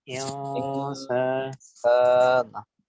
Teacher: নুনটাকে একটু নাকের মধ্যে নিয়ে অনুসারের মতো করে উচ্চারণ করতে হবে